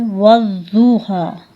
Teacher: इसमें सिफ़त इस्ताला भी है, सिफ़त इतबाक जैसी सिफ़ात पाई जाती हैं, जिसकी वजह से ये जितना हो सके मोटा अदा किया जाए। जैसा कि ज़ौत के एकाम में मैंने बताया था कि ज़ौत को जब भी अदा करेंगे तो ज़बान का दायां या बायां हिस्सा इज़रा से उलिया यानी जो ऊपर वाली दाढ़ें हैं उनको ढांप लेगा, तो ये सिफ़त तब जाके अदा होगी।